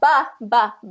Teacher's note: get the voice on for that B, the paper won't move